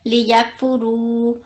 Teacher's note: یہ واو مدہ بنا، تو اس کو بھی ہم 2 سیکنڈ لمبا کر کے پڑھیں گے